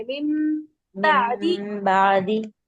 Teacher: नून को मीम ही पढ़ते हैं जब हम ये पढ़ते हैं, मीम देखकर।